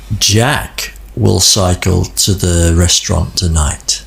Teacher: the word Jack here had the most Melody · You can hear that the word Jack has more melody, Plus, it also has a pause after the word, meaning, did you hear that important piece of information I just said? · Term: stress